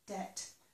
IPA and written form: dɛt (de-t)